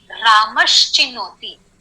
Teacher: रामः अधिक चिनोति का संधि होगा रामश्चिनोति. ओके, रामश्चिनोति. विसर्ग का हुआ शकार